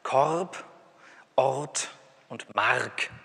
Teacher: ich spreche das R jetzt mal wirklich als Konsonanten aus